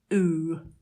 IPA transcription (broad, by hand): uː